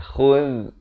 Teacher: Khuz, hujung lidah keluar. Kalau bunyi khuz, tak betul.